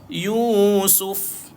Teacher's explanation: Mati kafa. Ada keluar angin. Ada sifat hams. Sikit dia keluar.